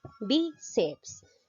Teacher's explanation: En la sílaba bi, bíceps. Lleva la mayor fuerza de voz en la penúltima sílaba. Termina en S.